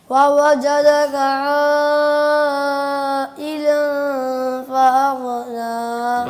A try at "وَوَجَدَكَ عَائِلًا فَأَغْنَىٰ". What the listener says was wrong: غین ہل گئی. فاغنا.